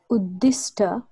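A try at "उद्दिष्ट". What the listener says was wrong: Uddishta Uddishta not Uddis not Sakara Uddanda it is cerebral sharp Uddishta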